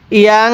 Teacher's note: নাকের বাঁশি দ্বারা গুন্নাহ করব। নুন সাকিনের পরে যদি ইকফার 15টি হরফ থেকে কোনো একটি হরফ থাকে তাহলে এই নুন সাকিনটিকে গুন্নাহ করে পড়তে হয়।